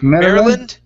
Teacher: So we just want to end with an N on Maryland.